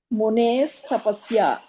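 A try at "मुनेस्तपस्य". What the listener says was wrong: తపస్య. ఉత్తమం.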